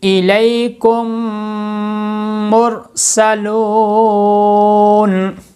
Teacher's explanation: میم ساکن کے بعد دوسری میم آ جائے تو میم کا میم ادغام کر کے غنہ کریں گے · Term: ادغام شفوی